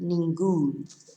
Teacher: to tell us to stress the end of the word, we have an accent, ningún